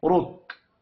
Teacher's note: را کو بھی موٹا پڑھیں گے پیش کی وجہ سے۔ وف کی صورت میں کاف ساکن پڑھا جائے گا، کاف ساکن ہو تو کاف پر قلقلہ نہیں کرتے۔